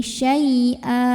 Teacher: fathah tanwin barisnya jadi 1 aja, jadi fathah. Dan kita bunyikan panjang 2 harokat ya. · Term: mad iwad